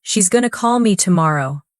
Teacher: The stress lands on call and tomorrow. Everything else flows quickly between them. Like music, da da da da da.